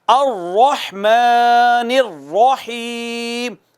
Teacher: رحمان میں بھی اور الرحیم میں بھی را مفخم ہے، پر کر کے پڑھنی ہے.